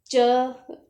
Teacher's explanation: च का उच्चारण स्थान तालु है, इसलिए इसे तालव्य व्यंजन भी कहते हैं